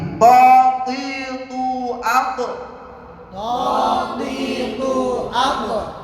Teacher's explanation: Ini mempunyai sifat istiqla ya. Naiknya lidah ke langit-langit ya.